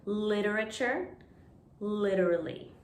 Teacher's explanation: in both of these words the t sounds like d